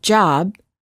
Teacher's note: we cannot continue the final B sound we stop the air flow by closing our lips therefore B is a stop if we quickly open our lips